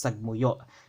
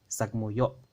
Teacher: Don't forget that glottal stop at the o